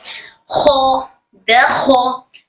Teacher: खो हमारे हलक के ऊपरी हिस्से से अदा होता है